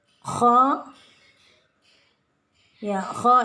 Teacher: kha ini adalah bacaan isti'la, jadi harus tebal